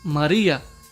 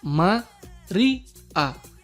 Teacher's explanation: el acento recae en la penúltima sílaba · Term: acentuación hiática